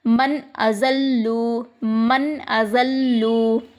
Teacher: نون کی آواز کو ہم ظاہر کریں گے، بنا چھپائے ظاہر کریں گے